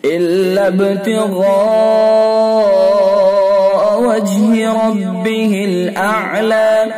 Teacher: با کے اندر قلقلہ ہوگا، غین کو پر کر کے پڑھیں گے۔ حرف مد الف ہے، الف کے بعد حمزہ اسی لفظ میں ہے، یعنی حرف مد اور حمزہ ایک ہی لفظ میں لہذا مد متصل ہوگا۔